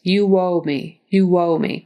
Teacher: that's because of the way we make those O's and oo you can see my lips are rounding like this it just naturally kind of becomes a w type sound